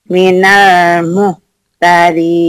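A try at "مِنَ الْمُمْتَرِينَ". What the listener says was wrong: Ini mim ya. Minal mumtarin.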